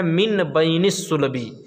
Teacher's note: من بین الصلب، اصل میں ہے من بین الصلب، مگر آپ نے قاعدے میں پڑھا کہ جب نون ساکن کے بعد با آئے تو وہ نون میم سے بدل جاتا ہے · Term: اقلاب